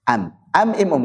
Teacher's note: dia mengubah nun sukun atau tanwin menjadi mim sukun mim sukun diucapkan am amum kalau itu belum mim begitu